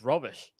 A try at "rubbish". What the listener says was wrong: Rubbish. Not rubbish. Not like wearing a robe.